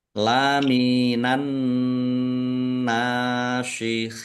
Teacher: alif lam samsiah karena tidak dibaca. Langsung masuk ke huruf berikutnya yaitu nun, ditandai nunnya ada tasdidnya. Nun tasdid dibaca gunah atau mendengung.